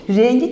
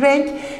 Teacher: Kelimemin kökü renk. I ünlüsü geldiği zaman K sert ünlüsünün G yumuşak ünlüsüne dönüştüğünü görebiliyoruz